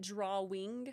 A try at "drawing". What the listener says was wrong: There's no L in drawing.